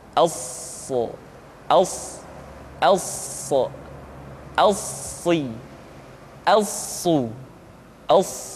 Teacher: Untuk memudahkan pengucapan huruf sa, perhatikan sifat as-safir yang dimiliki oleh huruf sa, yaitu suara tambahan yang terdengar menyerupai dengan suara angsa.